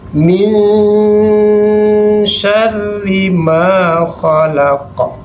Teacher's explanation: Masukkan bunyi syin min syarri maa khalaq. Jadi samar kemudian dengungkan sedikit. · Yang pertama pada ayat 2, minyarri maa khalaq min nun matinya kita samarkan. Masukkan bunyi syin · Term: ikhfa